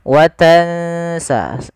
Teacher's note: kita langsung bacakan nunnya ke makhraj daripada huruf sin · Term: ikhfa